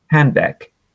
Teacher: So we're not saying the D at the end of handbag